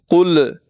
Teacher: لام کو زور دے کر اور جھٹکے کے ساتھ ادا کرتے ہیں، خوب واضح کر کے، گویا کہ اس میں قلقلہ ہو، حالانکہ یہ غلط ہے۔